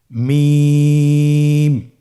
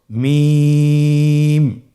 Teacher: দুই ঠোট চেপে ধরে আমরা উচ্চারণ করব